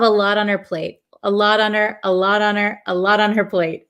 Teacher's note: this T in lot becomes a flap T, so it almost sounds like a D.